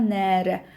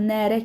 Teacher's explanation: Əgər uzanma yoxdursa, elə ancaq nərə kimi tələffüz olunursa, bu balıq mənasını ifadə edəcək. Balıq.